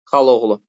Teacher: xala oğlu birinci a düşəcək olacaq xal oğlu və yaxud da xaloğlu.